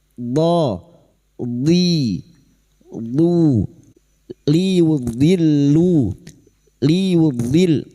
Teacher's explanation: Huruf dod tepi lidah nempel pada gigi geraham atas. Boleh kiri boleh kanan.